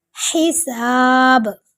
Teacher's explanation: ہا کو حلق کے درمیان سے نکالیں گے